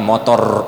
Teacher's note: Kalau kita kan orang Indonesia ini getarannya banyak ya, jadi contohnya motor gitu kan, R-nya getarannya banyak.